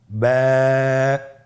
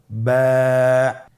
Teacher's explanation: এর মাখরাজ হলো আপনের দুই ঠোটের ভিজা অংশ থেকে আপনি উচ্চারণ করবেন